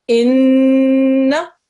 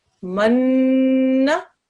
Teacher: with noon mushaddad, just like with the meme mushaddad, you have to make that nasal sound called gunna for 2 seconds